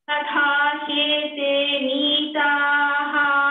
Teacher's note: Neetaha, ta is alpa prana.